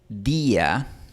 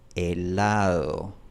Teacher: Cuando yo digo día, mi lengua está tocando los dientes.